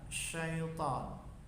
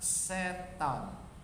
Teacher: Jadi mengucapkan syaitan itu menggunakan huruf sya, syaitan, bukan setan, bukan sin tapi sya.